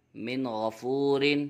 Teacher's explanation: یہاں پہ بھی نون ساکن کے بعد حرف حلقی میں سے غین آ رہا ہے، اس لیے یہاں پر بھی اظہار ہوگا، غنہ نہیں کریں گے۔ میم نون زیر من، خا واو زبر خو، من خو، فا دو زیر فن، من خوفن۔